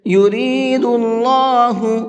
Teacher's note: اللہ کے لام کو منہ بھر کے پڑھیں گے، اس لیے کہ اللہ کے لام سے پہلے پیش ہے